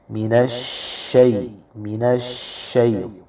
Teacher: شین میں آواز کو پھیلائیں گے صفت تفشی کی وجہ سے